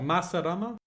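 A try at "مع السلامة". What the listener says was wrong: Ma'a, the a sound is not a sound that's in Western languages. It's basically the way Westerners write it is MAA, but the letter doesn't exist in the Latin language. It's ma'a as-salama.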